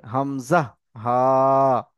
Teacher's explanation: তাহলে কণ্ঠনালীর শুরু থেকে, কণ্ঠনালীর শুরু থেকে হামজা এবং ছোট হা